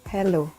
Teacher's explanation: The h sound is called voiceless glottal fricatives